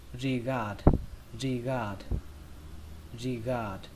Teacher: Trọng âm của từ này rơi vào âm thứ hai, âm gạt. Gạt. Ở đây âm thứ hai này nó giống như là từ ga ở trong tiếng Việt, xe ga đấy, xe tay ga.